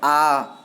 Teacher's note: आ तो ज़्यादा लंबा समय ही जा रहा है, मतलब 2 मात्रा का समय लग रहा है, तो इसलिए ये दीर्घ स्वर है।